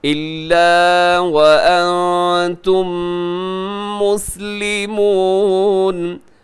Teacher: وَأَنْتُمْ یہاں نون ساکن کے بعد تا ہے تو یہاں اخفا کریں گے